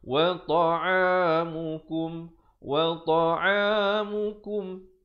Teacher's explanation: Izhar syafawi. Sempurnakan bunyi mim terus.